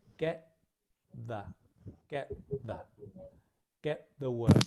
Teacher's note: Pronunciation is similar in that get ends in a t, the begins with a the. The tongue is in a very similar place.